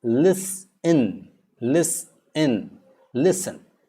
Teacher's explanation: the T is silent in words like listen